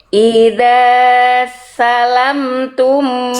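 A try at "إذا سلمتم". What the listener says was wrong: Salamtum. Lamnya tasdid. Idza salamtum.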